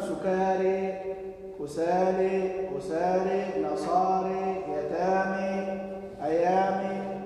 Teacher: فهذا أيضا مما يميله حمزة والكسائي رحمهما الله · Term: الإمالة